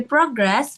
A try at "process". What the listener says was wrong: Oke, ini proses ya, bukan progress. process.